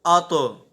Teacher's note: یہاں پہ آواز لوٹے گی، اتو اتو. تو حروف مستعلیہ میں سے ہے، اسے ہم پر بھی پڑھیں گے اور ساتھ آواز بھی اس کی لوٹے گی